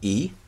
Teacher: the high front vowel e